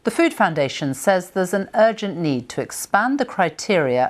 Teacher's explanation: many British people do not pronounce the letter r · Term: BBC style accent